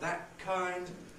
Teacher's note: You can have a glottal stop